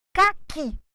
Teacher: A sílaba mais forte ficou clara que é o I.